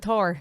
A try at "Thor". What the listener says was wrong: Thor. There's no A in it. Thor. it's Thor, not Thar. Thor.